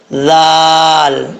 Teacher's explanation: زبان کا سرہ اوپر والے دانتوں کے اندرونی کنارے سے لگے تو ذال پڑھا جاتا ہے، ذال بغیر سیٹی کے پڑھا جائے گا